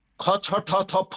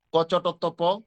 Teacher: মনে রাখতে হবে এই ক চ ট ত প, এই যে উপর নিচে যে পাঁচটা বর্ণ বা পাঁচটা ধ্বনি, পরের ধ্বনিগুলি একই ধ্বনি, পার্থক্য কি? বাতাসটা বেশি ছাড়তে হবে আর আগের গুলিতে বাতাসটা কম ছাড়তে হবে।